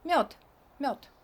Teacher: You think it has to be read mёд, but in Russian also, like in many other languages, not like in English, the last consonant becomes deaf because it's in a weaker position. So we don't pronounce it like d, we pronounce it like t.